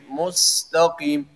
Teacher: پر صفت سفیر ہے اور سین کے اندر، تو اس لیے صفت سفیر کی رعایت رکھتے ہوئے سیٹی کی آواز ہو، لیکن قلقلہ سے اپنے آپ کو بچانا